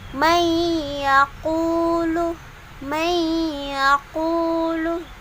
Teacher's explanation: dengungnya itu dipanjangkan selama dua harokat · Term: Idgham Bighunnah